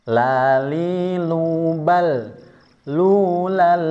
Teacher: Karena tanwin bertemu dengan lam menjadi idgham bila ghunah. Ya, tanpa ada dengung hanya sekedar memasukkan kepada huruf lam.